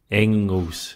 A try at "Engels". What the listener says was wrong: The G's not pronounced, so it's Engels. It's not a hard G.